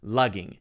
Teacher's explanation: ging is a little weird it's not a short I sound ing is pronounced ing it's actually the long e sound